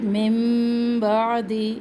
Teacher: یہاں پر ہم ایک الف کے برابر ٹھہریں گے, ادغام کریں گے. پھر من بعد نون ساکن کے بعد یا تنوین کے بعد جب حرف با آ جائے تو وہاں پر آواز نون کی آواز میم میں بدل جاتی ہے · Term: اخلاق